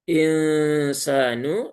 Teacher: Disamarkan nunnya bersiap mengucap huruf berikutnya yaitu huruf sin. yang mana sin itu dia ada di ujung lidah mendekati gigi seri bawah. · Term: ikhfa hakiki